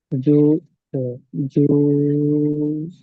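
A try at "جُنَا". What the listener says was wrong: জিমটা টান হবে না, জিমটা শুধু পেশ টান হয় না, নুন আলিফ যাবার না, এইটা টান হবে।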